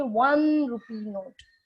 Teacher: again it doesn't have the o sound okay like orange orange it doesn't have that o sound it has a sound of w